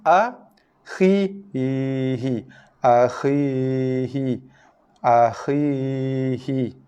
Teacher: Huruf ya ini yang dibaca dengan makhraj al-jauf, bunyi nafas yang keluar daripada dada kita, naik ke rongga leher, naik ke rongga mulut. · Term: ya mat